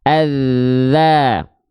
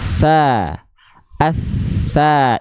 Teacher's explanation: Kalau huruf zal, dia hanya mengalir suara saja tanpa adanya aliran nafas. Kalau huruf sa, dia mengalir nafas, dialiri dengan suaranya juga.